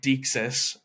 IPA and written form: diksɪs (deixis)